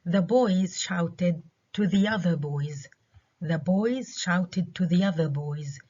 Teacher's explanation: كلمة boys الثانية ما عليها ستريس، اللي عليها ستريس هي other لأنه أنا عملت contrast between the boys و the other boys.